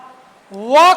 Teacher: यदि अगले सूत्र की बात करें तो वकारस्य दंतोष्ठम, अर्थात व का उच्चारण दांत एवं ओठ दोनों से होता है